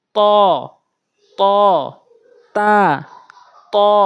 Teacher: দুইটা একই জায়গা থেকে জিহ্বার আগা এবং দুই দাঁতের গোড়াতে লাগাতে হয় পার্থক্যের দিক থেকে ত টা মুখ গোল করে তাটা মুখ উসার